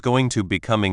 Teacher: The ing part often gets very short and to becomes a weak a sound or disappears.